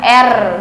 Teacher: ujung lidah menyentuh gusi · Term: fonem R